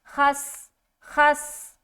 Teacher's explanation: خس میں سین کی ادائیگی سیٹی کے ساتھ, سیٹی کی جو آواز ہے نا وہ جھلکنی چاہیے, ابھرنی چاہیے.